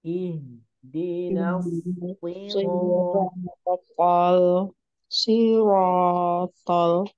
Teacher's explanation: Ro panjangnya 2 harokat karena ada huruf mad yakni alif. Hukumnya disebut mad tabi'i.